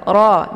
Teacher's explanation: ra ini dibaca secara tebal. Ra, jadi posisi ujung lidahnya terangkat ke langit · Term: tafkhim